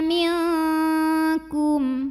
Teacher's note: Karena nun sukun menghadapi huruf kaf, maka nun sukun dibunyikan samar-samar, siap-siap menuju makhraj huruf kaf disertai bunyi dengung. Dan kaf dengungnya banyak karena jauh makhrajnya dari nun. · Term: ikhfa